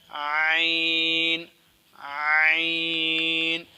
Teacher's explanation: دونوں حروف حلق کے درمیان والے حصے سے ادا ہوتے ہیں۔ تو آپ کی آسانی کے لیے بتا دوں، حلق کا درمیان والا حصہ، یہ جو نرم جگہ ہے نا، یہ حروف یہ جگہ ہے، یہاں سے یہ 2 حروف ادا ہوتے ہیں۔